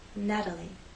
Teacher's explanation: The T having very quick, light contact.